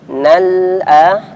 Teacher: Perhatikan di sini nal'a ya, cara nekannya setengah dialirkan suaranya ya, punya sifat tawasud atau bainiyah ya.